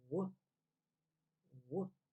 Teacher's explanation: With the W sound, it's a little bit more aggressive. You push the sound out of your mouth through your lips.